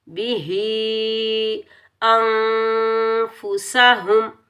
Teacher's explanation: मद्दे मुनफसिल जायज़, तो इसको 2.5 से 3 अलिफ की मिकदार में खींच कर अदा करेंगे